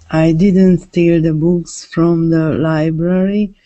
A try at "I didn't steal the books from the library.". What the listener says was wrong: Can you say it like with the a bit more stress on the word steal?